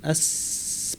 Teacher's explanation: সদ অক্ষরটা ভারী, জিহ্বার একদম শীর্ষটা নিচের পাটির দাঁতের গোড়ায় লাগিয়ে আমরা সিন এবং সদ দুটো হরফই পাচ্ছি। আস পাতলা করে, ভারী করে।